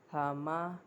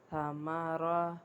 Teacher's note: اب اس میں غور کرنے کی بات یہ ہے کہ ایک تو میم کو میں نے با والے مخرج سے ادا نہیں کیا، مطلب کہ دونوں ہونٹوں کی اندرونی تری کو ملانے سے میں نے با ادا نہیں کیا، جبکہ میں نے دونوں ہونٹوں کی بیرونی خشکی کو ملانے سے ادا کیا ہے